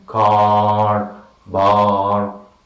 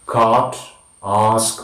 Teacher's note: Next we have the back sound, the long sound, the sound in car, bar, and we say back, open, unrounded, long sound, like in cart, ask.